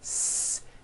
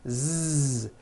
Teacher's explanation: s has no voicing s z has voicing Z